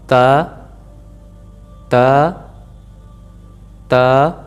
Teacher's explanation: ज़ुबान की नोक को सामने वाले दांत की जो सी सख्त तालू होता है, जहाँ पे अगर आप अपना अंगूठा जो है अंगूठे को वहाँ पे लगाएं और महसूस करें कि हमारा तालू जो सा वहाँ से सख्त है, और वहीं जो जहाँ पे हमारे दांतों की जड़ है, जहाँ से मसूड़ों से दांत निकल रहे हैं, वहाँ पर आपने ज़ुबान को लगाएंगे